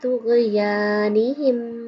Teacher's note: یا کے اوپر کھڑی زبر ہے اس لیے اس کو تھوڑا کھینچیں گے